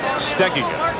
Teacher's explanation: The accent on the pronunciation that most people use is on the second syllable, but it should be on the first syllable